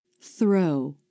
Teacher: Notice how the lips are starting to flare for the R as the tongue comes through the teeth for the unvoiced TH.